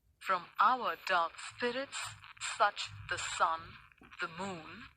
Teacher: in each line that is there are five foots or units each containing one unstressed syllable followed by one stressed syllable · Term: iambic pentameter